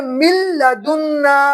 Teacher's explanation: میم کو لام سے ملا دیں گے، نون کو حذف کر دیں گے، تو پڑھیں گے من لدن۔